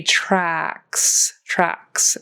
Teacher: your mouth goes wide to make that short a sound